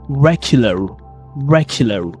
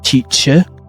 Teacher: American accent tend to pronounce the letter R clearly.